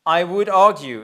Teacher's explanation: Maintenant argue I' donc évidemment c'est would dont on ne prononce toujours pas le L. I would argue.